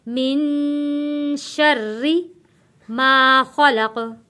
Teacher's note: मिन नून साकिन है, नून के ऊपर गुन्ना अदा करेंगे।